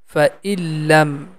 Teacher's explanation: The E sound is directly connecting with Lam because Lam has a Shadda sign on the top.